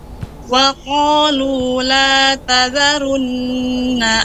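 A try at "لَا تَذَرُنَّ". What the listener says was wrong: Runya tebal, Ibu. Runya tebal. Wa qalu la tadharun. Run. Dinaikkan dia lidahnya. La tadharun.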